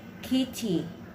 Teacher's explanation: When the T occurs between voice sounds, it becomes a flap T sound.